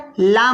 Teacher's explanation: इसी तरह से किनारा ज़बान मसोड़े से मिलकर, किनारा ज़बान मसोड़े से मिलकर लाम अदा होता है